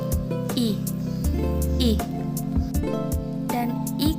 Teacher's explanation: urine tidak ada kita Berasa ada sedikit getaran menyebut ih Capital mulut kita tidak membundar melainkan melebar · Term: vokal I